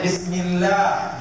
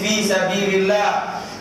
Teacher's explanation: Maka sebelum kalimah Allah itu, lafzul jalalah itu baris bawah, maka dia nipis. Ya, bismillah nipis.